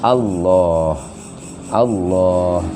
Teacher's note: kan Allah itu panjang, 2 ketukan toh